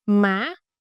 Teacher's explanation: It's a raising tone. The pitch go up quickly. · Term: thanh sắc